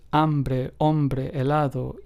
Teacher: the H is completely silent and the pronunciation of each word begins with the second letter